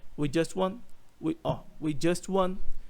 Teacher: Eu quase não pronuncio o segundo T. Na verdade, a minha língua toca no céu da boca, mas eu não pronuncio t.